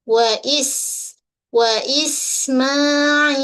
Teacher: Pada huruf sin yang mati jelaskan desiran bunyi sin macam ular